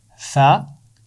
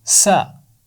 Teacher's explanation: सा की आवाज़ नरम होती है, सीन की आवाज़ में सीटी होती है, या सा की आवाज़ में सीटी नहीं होती और सीन की आवाज़ में होती है।